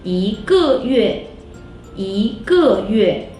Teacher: Now, 一 is the second tone.